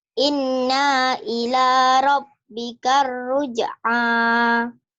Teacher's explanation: Tadi kamu bacanya inna kepanjangan